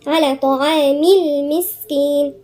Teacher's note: على الطاء هنا لساننا كله لفوق، الطرف والوسط والأقصى